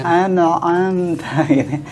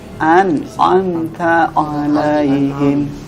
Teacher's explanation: Anta nggak boleh dia baca agak lama, ada dengungnya maupun ada qalqalahnya, nggak boleh. Gunnah dan qalqalah itu tidak berlaku di huruf nun ketemu dengan ain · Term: idhar